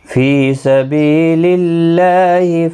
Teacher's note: فی یا مدہ ہے، بی یا مدہ ہے، ایک الف کی مقدار کے برابر کھینچ کر پڑھیں گے